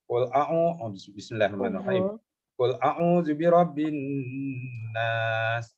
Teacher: mim sabdu dengan nun sabdu ni, hukum dia dipanggil wajibul gunnah, wajib didengung